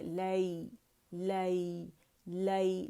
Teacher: लाम के मखरज पे बाकायदा जाएंगे और या के मखरज पे आएंगे, लाई। ठीक है, इलैना, इलैना, उनका मखरज पकड़ेंगे और उसे ये वाली जो मद आपको अलिफ नज़र आ रहा है, ये खींच रही है, उसको 2 काउंट के लिए आवाज़ ऊपर जाएगी।